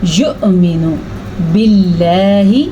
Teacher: لفظ اللہ کو باریک پڑھنا ہے کیونکہ لفظ اللہ سے پہلے زیر ہے۔